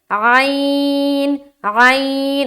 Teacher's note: وسط حلق سے نکلتا ہے، یعنی کہ جو حلق کا جو درمیانی حصہ ہے نا اس سے عین ادا ہوتا ہے